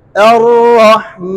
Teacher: मा कड़ा जबर नाक में नहीं पढ़ेंगे